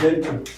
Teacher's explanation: Gentle is stressed on the first syllable.